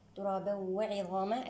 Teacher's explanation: هنا لدينا حكم الإدغام الناقص بغنة، وغنة الإدغام الناقص من المرتبة الثانية